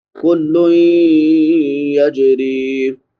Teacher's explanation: لام پہ نون تنوین ہے، بعد میں حروف یرملون میں سے یا ہے تو ادغام مع الغنہ ہوگا۔ یجری، جیم پہ قلقلہ ہوگا اور را کو باریک پڑھیں گے کیونکہ را کے نیچے زیر ہے، را کے بعد یا مدہ ہے، الف برابر لمبا۔